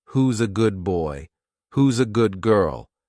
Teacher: they took the word good and replaced the D with the first letter of a word that followed